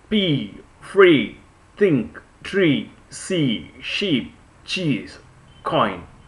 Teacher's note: there is no vibration in our vocal chords that's why we say it's an uh unvoiced consonant and next